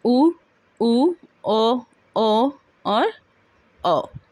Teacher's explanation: आइए अवृत, ठीक। दूसरा है वृत्तमुखी, जिसमें होंठ गोलाकार होते हैं